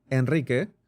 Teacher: Enrique which has a very fast rolling r in the middle